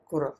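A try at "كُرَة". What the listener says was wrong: शद्दा नहीं, विदाउट शद्दा।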